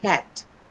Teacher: the second sound that you hear is a pure one. It's not a diphthong.